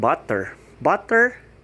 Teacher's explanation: instead of hearing the letter t they would pronounce it as a d which is again not the right thing so when you say